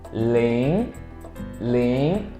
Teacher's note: second tone. The pitch goes up.